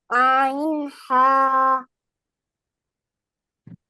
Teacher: আচ্ছা, হলক 2 নম্বর হলকের মধ্যখান হইতে আইন হা